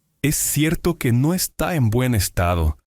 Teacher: la S y la C se fusionan en una sola S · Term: habla conectada